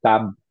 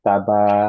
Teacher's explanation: এক আলিফ টান দিতে হবে, দ্যাট ইজ হচ্ছে যে আমরা বলি টু হারাকাজ।